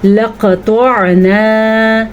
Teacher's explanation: قاف کو بھی موٹا پڑھنا ہے اور طاء کو بھی موٹا پڑھنا ہے۔ اس کو عربی زبان میں کہتے ہیں یا اردو اچھی زبان میں کہتے ہیں پر کر کے پڑھنا۔